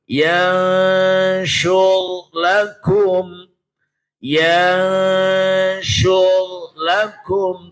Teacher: Ro sukun dibaca tafkhim tebal.